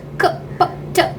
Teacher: Again, explosives, two types: hard and soft. There is, when you utter these hard explosives, k, p, t, it's like an explosive, and there is no vibration of throat